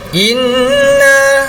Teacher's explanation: Di sini adalah nun bersabdu, hukumnya adalah wajibul ghunnah, harus berdengung. Wajib berdengung, bukan harus, wajib berdengung.